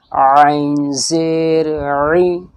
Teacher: عین حلق کے بیچ سے نکلتا ہے